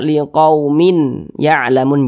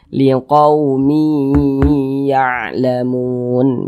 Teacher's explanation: Bunyi tanwinnya ini kita masukkan ke huruf ya, kita baca liqaumi ya'lamun. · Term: idgham bi gunnah